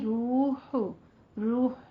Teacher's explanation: دونوں ہونٹوں کو گول کرتے ہوئے 2 حرکات برابر لمبا کھینچیں گے. واو متا آ رہی ہے.